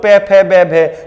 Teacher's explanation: होठ बार बार फड़फड़ा रहे एक दूसरे के ऊपर, तो इसको हम बोलते हैं ओष्ठ।